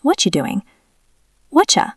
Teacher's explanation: That is t plus y turning into cha.